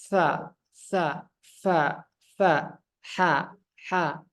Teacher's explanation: bisa dirasakan napas yang keluar itu mengalir dengan deras